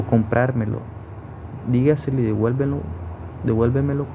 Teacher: O comprármelo, dígaselo y devuélvemelo cumplen las mismas reglas, y es por eso que son palabras sobresdrújulas, porque el acento fonético recae en la anterior a la antepenúltima sílaba